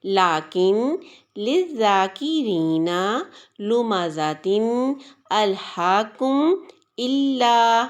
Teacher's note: زواحق سے لے کر ثنایا تک کے مقابل کے مسوڑوں سے جب زبان کا سامنے والا حصہ یعنی طرف لسان ملتا ہے تب جا کر لام ادا ہوتا ہے۔ لام کی ادائیگی میں 5 دانتوں کا دخل ہے اور اس میں ایک داڑھ شامل ہے، یعنی ثنایا کے 2 دانت، رباعی، انیاب اور زواحق جسے پہلی داڑھ بھی کہا جاتا ہے۔